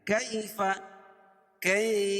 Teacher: یا ساکن سے پہلے زبر ہو تو یالین ہوتا ہے، اس کو نرم آواز کے ساتھ جلدی ادا کریں گے. کیف، کئی کھینچ کے نہیں، اس کو جلدی ادا کریں گے.